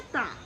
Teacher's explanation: ता के उच्चारण में जो जीभ है वो दांतों का स्पर्श करती है।